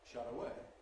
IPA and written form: ˈʃʌt̬ əˈeɪ (shut away)